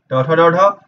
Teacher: इसका उच्चारण स्थान मूर्धा होता है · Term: ट वर्ग